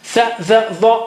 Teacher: touching the tongue tip with the edge of the teeth.